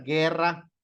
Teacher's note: guerra tiene su sílaba tónica en la penúltima pero como termina en vocal no se acentúa y aquí aplicamos